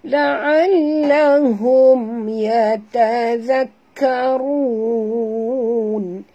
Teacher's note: Dekat lam ada tasydid njut, la'allahum ha simple bunyi daripada dalam halqum, jaga bunyi ya makhrajnya. Min mati bertemu ya, tak boleh dengung, izhar syafawi.